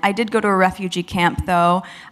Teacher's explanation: This point is underlined by her inclusion of and vowel stress on the auxiliary verb did.